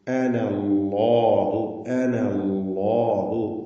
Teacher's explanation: അല്ലാഹു എന്ന ഇസ്മുൽ ജലാലയിലെ ലാമിനെയും തഫ്ഖീമാണ് ചെയ്യേണ്ടത്, തടിപ്പിച്ചുച്ചരിക്കണം. അത് ലാമാണ്. · അപ്പോൾ ഇന്നി അനല്ലാഹു റബ്ബുൽ ആലമീൻ. അന എന്ന് വഖഫ് ചെയ്യുമ്പോഴാണ് അലിഫ് ഉണ്ടാവുക, ചേർത്തോതുമ്പോൾ അലിഫ് ഉണ്ടാവുകയില്ല